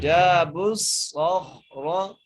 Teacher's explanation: خا کو بھی موٹا کریں گے، را کو بھی موٹا کریں گے